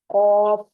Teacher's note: पर मोटी आवाज में कफ अदा होता है कफ जो है ऊपर तालू का जो नर्म हिस्सा है गले की तरफ वहां पर यह जुबान की जड़ लगेगी तो क मोटी आवाज में करके इसको अदा करेंगे का जो